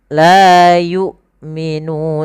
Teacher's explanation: seakan-akan putus suaranya tapi dia tertahan bukan putus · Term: huruf hamzah